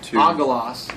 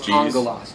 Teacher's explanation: when you have two gamas back to back the first one is pronounced as an N